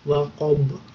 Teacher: di situ ada yang ba itu juga qalqalah, maka harus memantul waqab